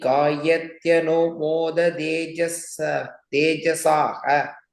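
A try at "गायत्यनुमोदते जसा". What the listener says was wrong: In the Saha, there's no Visarga there. Gayatyanumodaten Jasa.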